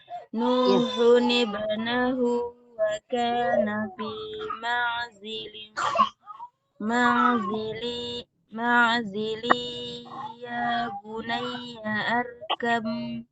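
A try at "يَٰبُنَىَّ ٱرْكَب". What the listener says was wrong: Langsung hamzah wasol tidak dibaca di tengah kalimat ya. Ya bunayyar kam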